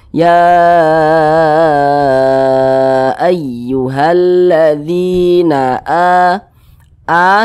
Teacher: panjangnya itu dua harakat atau kira-kira dua katukan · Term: Mad thi'i, mad tabi'i